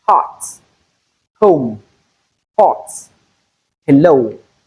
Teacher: glottal fricative sound is that fricative sound that is made directly from the glottis. The sound comes directly from the vocal cord. · we have only one glottal fricative sound, which is voiceless. It has no voice. We have only one spelling for the sound, and that is letter H. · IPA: /h/